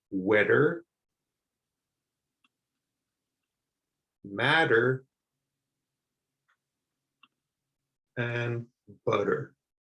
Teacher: you can get used to pronouncing that double T like a D sound, especially if you're in the USA. Sometimes if you try to make a hard T sound, people might not understand you.